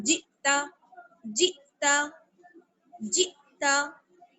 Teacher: حمزہ کے اوپر سکون ہے اس لیے جھٹکے کے ساتھ پڑھیں گے